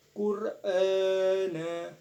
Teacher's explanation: Sebab huruf alif berharokat, fathah berdiri dan panjangnya 2 harokat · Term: mad badal